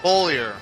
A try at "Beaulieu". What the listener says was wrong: And there's no R on the end.